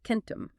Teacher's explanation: that C was a hard velar stop, a K sound. · The K sound is made way back in the throat on the soft palate, the velum. But the next letter is E, which is a front vowel.